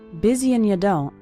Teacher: That's very common for the word and to get reduced to just an n sound.